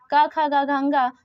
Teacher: आ और का वर्ग का खा गा घा तथा हा और विसर्ग का उच्चारण स्थान कंठ है